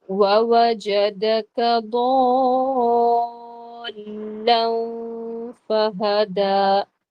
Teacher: மத்து லாசிம், அதாவது மத்துக்கு அப்புறமா ஷத்தா வந்திருக்கு. இது வந்து நாங்க 6 ஹரக்கத், அதாவது 6 கவுண்ட்ஸ் டிராக் பண்ணணும்